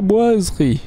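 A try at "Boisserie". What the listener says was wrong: Boiserie, deux S. T'as dit Boiserie. C'est comme Mercedes. On dit Mercedes tout simplement.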